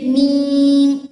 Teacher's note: आपके दोनों होंठों की बैरूनी तरी यानी बाहर वाली साइड पे जो हिस्सा होता है वो मिले तो ये वर्ड अदा होता है